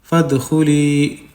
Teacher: یا کو کھینچیں گے یا مدہ کا 1 الف کے برابر